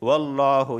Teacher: لفظ اللہ سے پہلے زبر آیا ہے، اس وجہ سے میں لفظ اللہ کو موٹا پڑھ رہا ہوں۔